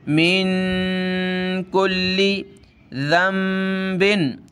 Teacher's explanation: नून साकिन है, इसको पढ़ते वक्त नाक में आवाज़ पैदा करनी होती है